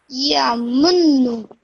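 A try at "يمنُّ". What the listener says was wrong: When you say this munnu, just hold that nasal sound in for a bit in your nose.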